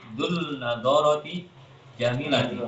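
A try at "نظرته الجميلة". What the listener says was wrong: alif lamnya jangan lupa.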